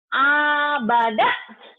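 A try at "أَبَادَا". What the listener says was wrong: Bukan yang keempat ini panjangnya yang pertama sama terakhir. Abada gitu, yuk.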